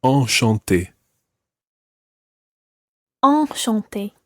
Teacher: Enchanté is a slightly different nasal sound, and your mouth needs to be wider for that